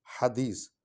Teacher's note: یہ ہا حلوے والی جو ہے یہ ہم حلق سے نکالیں گے